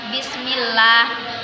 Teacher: Apabila ada kasroh sebelum lafdzul jalalah, maka dibaca tarqiq atau tipis.